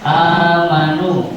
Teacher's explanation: dibaca Hanya satu alif atau dua harokat dinamakan mad badal sebab harus panjang.